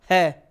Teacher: है कुछ नहीं टकरा रहा। मुख से सीधी ध्वनि बाहर निकल रही है। कोई स्पर्श नहीं है।